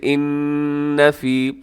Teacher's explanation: غنہ ہو رہا ہے، اور یہ غنہ زمانی ہے